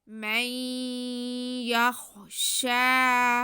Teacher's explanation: ساکن کے بعد یا حروف ادغام میں سے، تو یہاں پہ ہم نے نون کی آواز کو یا میں ملا کے پڑھنا ہے ، ہلکی سی نون کی آواز بالکل ہلکی سی آئے گی،